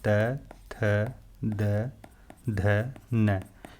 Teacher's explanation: ऊपर वाले दांतों से जो है जिह्वा टच करती है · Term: दंत्य